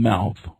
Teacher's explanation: The grapheme M. is a nasal labial sound, as in the M sound in mouth. It is produced with the mouth closed.